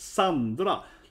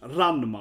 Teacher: It's kind of like if I say the name Sandra in Swedish, it's Sandra. Like the first A is long and the second A is short.